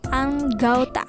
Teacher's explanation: Perubahan ini terjadi pada bunyi vokal tunggal O ke vokal rangkap AU, tetapi tetap dalam pengucapan satu bunyi, puncak. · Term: Diftongisasi